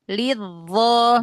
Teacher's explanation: zo-nya gesekan sedikit, makhrajnya zo angkat pangkal lidah, terus ujung lidahnya keluarkan.